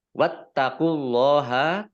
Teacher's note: Wattaqullaha, taknya ada tasdidnya dibaca double. Kemudian Allahnya dibaca tebal karena harokat di depannya dhammah